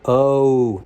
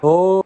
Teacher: When I usually pronounce the O sound, oh, it closes up, but in Minnesota, oh, my mouth stayed big